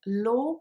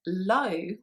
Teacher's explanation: The sound at the end of the word, the AW sound, is just one vowel sound, whereas in words like low, you've got a diphthong at the end, which is like a double vowel sound, O.